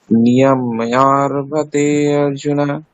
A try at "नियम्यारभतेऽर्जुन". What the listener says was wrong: অর্জুনা বলবেন না, হ্যাঁ, ওখানে অকারটা সাইলেন্ট, ঠিক আছে, অকারটা ওখানে উচ্চারণ করা হবে না, ওটা লুপ্ত অকার। নিয়ম্যারভতের্জুন।